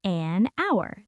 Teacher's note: The H is silent. You say hour, that is a vowel sound